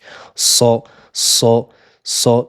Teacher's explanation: La lettre Sod se prononce en faisant toucher le bout de la langue sur le haut des incisives inférieures, juste à ce niveau-là. On doit entendre un léger sifflement, un léger sifflement, et c'est une lettre emphatique, donc l'arrière de la langue va gonfler à ce niveau-là.